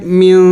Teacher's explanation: من نہیں پڑھیں گے یہ نون کو ظاہر کر کے نہیں پڑھیں گے بلکہ نون کو چھپائیں گے. میم نون زیر من. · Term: اخفا